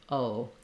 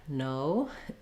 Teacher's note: O in English is a diphthong, meaning it slides from one mouth position to another in order to say it. So I'm not saying an o and an separately.